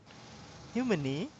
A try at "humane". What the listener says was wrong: Humane, humane, humane. Yeah, again, there's the A and then the consonant and then the E becomes silent. So the A, human, you remember human, no E at the end. So man, man.